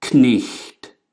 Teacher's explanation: We don't like having sound clusters kn anymore in the beginning of words, and we don't like having puffs of air before our T's. But Old English did.